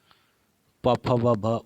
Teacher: प, फ, ब, भ ओष्ठ से, ओठों से बोला जाता है